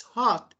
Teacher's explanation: but in British it's hot because R is silent